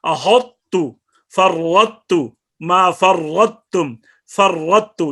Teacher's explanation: ان میں ایک طا ہے، اس کی تفخیم، صفت استعلاء اور اطباق باقی رہ جاتی ہے طا کی، اور قاف کی صفت استعلاء، طا کی استعلاء اور اطباق دونوں صفتیں وہ ادغام ناقص میں ظاہر ہوں گے